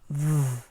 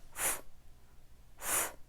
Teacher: It's the same sound, except the V is voiced and the F isn't.